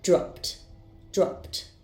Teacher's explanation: First, I have the verb drop. Its sound ends in p, so the ed ending will be pronounced as t.